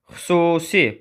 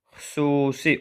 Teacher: Burada xüsusi U uzanır. U qalın saitdir. İncə saitin uzanması burada yoxdur.